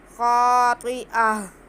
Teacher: तनवीन के बाद खा आ रहा है, तो इस पे हम बिल्कुल भी गुन्ना नहीं करेंगे बल्कि इजहार करेंगे। हरूफ हल्की है खा, तो तनवीन के बाद खा आ रहा है, तो यहाँ पे इजहार होगा खातिआ।